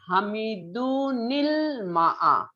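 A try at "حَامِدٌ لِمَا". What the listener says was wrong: না নীল বলেন না আপনি, হামিদু উন ইল মা আ এইভাবে বলেন। দুন, না নীল বলা যাবে না।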